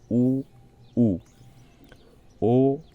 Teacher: जीवा की स्थिति देखिए वृत्ता मुखी और अवता मुखी वृता मुखी उ उ में आपका होठ गोल बन रहा है ऐसे वृत के आकार का